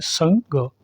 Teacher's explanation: पहले यह है संग। संग नाक से आ रहा है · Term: अनुस्वार